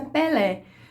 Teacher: norte do país você possivelmente vai encontrar para não se a pelé com a vogal aberta depois do p